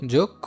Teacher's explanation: মফলা থাকার কারণে আনুনাসিক চলে আসছে, ঠিক আছে, কিন্তু এখানে মফলা দ্বৈত হয় নাই, পাশাপাশি মফলারও কোনো উচ্চারণ হচ্ছে না।